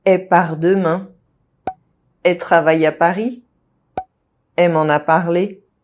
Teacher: The L sound of subject pronouns elle, she, and elle, the feminine they, is also often dropped.